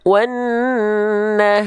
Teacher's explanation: Vokalnya kan A, bukan wanaho ya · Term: huruf yang tipis